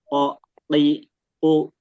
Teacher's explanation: Kalau qof e pangkal lidah menyentuh bagian yang lunak. Bagian lunak.